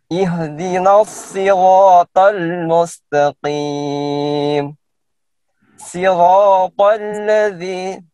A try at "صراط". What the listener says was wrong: هنا ليس السين هنا الصاد.